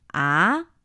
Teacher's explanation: the second tone is supposed to be a three five